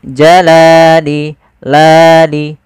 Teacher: Panjangnya adalah 2 harokat. Yaitu kita memanjangkan lamnya. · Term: mad tabi'i